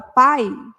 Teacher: quando eu falo a palavra pai o i desaparece predomina o som do a pá pá aí o i quase que a gente não fala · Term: semivogal